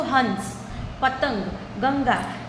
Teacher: आप बोलते हो हंस, पतंग, गंगा, तो यहाँ पे देखिए यहाँ पे ऊपर लगा गया है पतंग, गंगा, ठीक है। जब आप भी उसको प्रोनाउंस करते हो तो आपके नाक में वाइब्रेशन होता है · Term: अनुस्वर